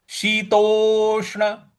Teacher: शीतो के बाद जो षट्कोण वाला आधा श है वहां पे हल्का सा बल लगाना है